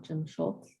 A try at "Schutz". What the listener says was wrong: Yes, Schutz, no L.